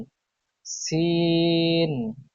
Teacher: জিহ্বার আগা সামনের নিচের দুই দাঁতের পেট ও আগার সঙ্গে লাগিয়ে উচ্চারিত হয় সিন